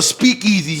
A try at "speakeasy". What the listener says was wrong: For you said it like if it was two separate words. No, it's one word.